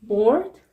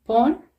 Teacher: B sound is voiced, we have vibration. P is voiceless, we don't have vibration.